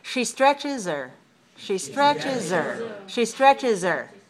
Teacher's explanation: a verb and a verb has a lot of content so pronouns are usually very weak and we can weaken the H · if she stretches her we don't say the H · we don't say the H. We say stretches her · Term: reduce the H